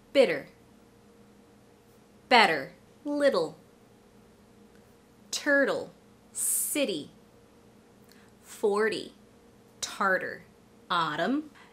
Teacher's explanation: I was pronouncing the T almost as if it were a light D sound. This is what we call the flap T.